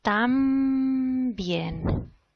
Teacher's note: If you pay attention to your lips, you will probably see that what you are producing is a bilabial nasal in this context. Why? Because of the influence of the B, the bilabial sound in bien. This is a case of assimilation.